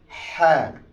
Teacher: গলার হলকের মাঝখান থেকে গলার মাঝখান থেকে হা।